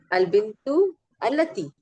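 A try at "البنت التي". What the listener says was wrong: अलबिंतुल लती, हाँ मिला दें, अलबिंतुल लती कर दें, सही है।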